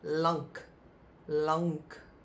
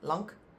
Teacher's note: we pronounce it quickly, lank, and then you almost don't hear the n, but it's lank, lank, and that means long or tall. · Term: nk sound